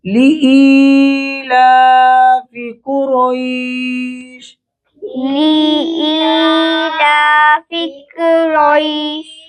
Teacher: لام پر کھڑی زبر ہے، ایک الف کی مقدار لمبا ہوگا۔